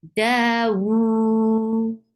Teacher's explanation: Whenever these are with sukoon, will get sifa of qalqala. So you are applying sifa of qalqala on dal.